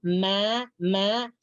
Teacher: Mim adalah berada di antara dua bibir. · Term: huruf mim